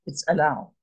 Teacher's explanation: And that's ah, as in allow. Look how short that allow is. That ah, you scarcely hear it. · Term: chatef patach